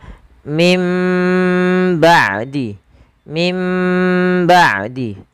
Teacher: Bibir kita rapat seutuhnya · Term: idbak